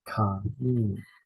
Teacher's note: Notice the stress is on the first syllable, ka-yin.